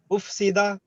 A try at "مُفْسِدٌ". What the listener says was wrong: نہیں، تنوین ہے آخر پہ.